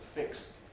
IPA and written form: fɪks (fix)